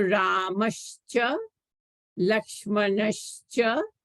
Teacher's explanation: So here visarga is followed by a cha. Visarga becomes a sha.